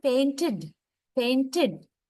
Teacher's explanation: some other times we end the verb, past tense verb, with id sound, like painted.